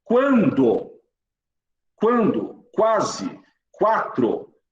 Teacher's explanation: você escuta o som do U. Então não é mais dígrafo. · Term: ditongo